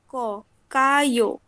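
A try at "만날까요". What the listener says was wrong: প্রশ্ন করতেছে, গলা টোনটা একটু উপরে থাকবে। মান্নাল কায়ো।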